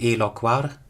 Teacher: there's a shortening process and we get eloquar with a short vowel, but in Plautus it's consistently long.